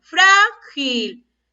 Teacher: ¿Y dónde está la mayor fuerza de voz? En la sílaba fra.